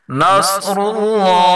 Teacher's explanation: صاد را اور اللہ کے نام کو پر پڑھیں گے